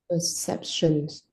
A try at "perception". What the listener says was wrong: Yeah, no S, perception.